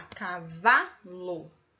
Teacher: Na palavra cavalo, a sílaba tônica é o vá, né? V e o A, cavalo.